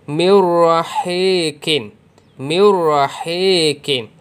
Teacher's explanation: nun ni tidak berbunyi, jadi dia macam tak ada bunyi nun mati pun, sebab nun ni dah masuk ke dalam huruf ra. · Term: idgham bila gunnah